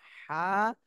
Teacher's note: এই হা টা গলার মধ্যখান থেকে উচ্চারণ হবে